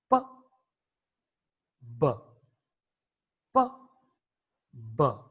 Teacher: It means there is a closure, there is a contact between the upper lip and lower lip. When you bring both the lips together, that contact or the closure is created. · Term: bilabial sound